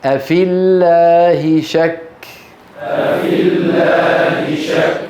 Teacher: أفي هذه ياء لكنها ساكنة وبعدها لام لفظ الجلالة ساكنة، فالتقى ساكنة، فنسقط الياء من اللفظ لا من الخط